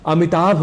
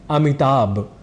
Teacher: जैसे अमिताभ बच्चन यह एक प्रसिद्ध नाम है, पर शीघ्रतावश या अनवधानतावश हम अमिताभ इस शब्द में भ की जगह ब यह उच्चारण कर जाया करते हैं और उच्चारण की दृष्टि से हो जाती है हमसे चूक। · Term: महाप्राण